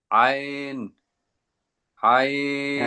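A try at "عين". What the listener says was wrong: আইন আরো টান দিয়ে বলবেন, আরেকটু টাইম দিয়ে বলবেন, আইন।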